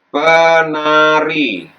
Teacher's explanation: Fonem T di sini luluh atau dihilangkan. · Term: Fonem T luluh